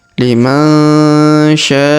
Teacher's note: Huruf sya kita panjangkan 5 harokat di sini karena di atasnya terdapat tanda garis panjang 5 harokat